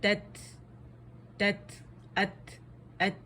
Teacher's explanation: ہوا آئے گی آپ کے ہاتھ پہ، فیل ہوگی باقاعدہ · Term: ہمز